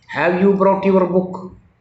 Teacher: the tone of the voice rises so that it is a question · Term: intonation